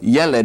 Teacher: The accent is on the first syllable.